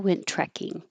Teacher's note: Went trekking, only one T sound. Just hold the first one and release the airflow on trekking.